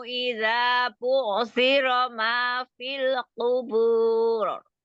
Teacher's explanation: Qafnya jangan terlalu ke belakang, jangan ku gitu. Ku disentuh aja.